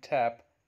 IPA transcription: tæp